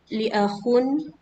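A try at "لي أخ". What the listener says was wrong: Li-nya panjang, 2 harakat.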